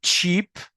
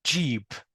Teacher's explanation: بيبقى فيه اهتزاز في الاحبال الصوتيه